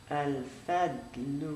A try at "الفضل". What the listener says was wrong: No, so this is not a thin letter. It's a thick. Al-Fadlu. Al-Fadlu. Fadlu. With no air.